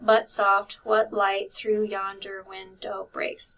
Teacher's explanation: 10 syllables in that line, and it should be that every other syllable is emphasized. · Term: iambic pentameter